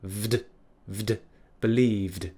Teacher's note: a word ends with a voiced consonant we turn it into an ed ending and it turns into a D sound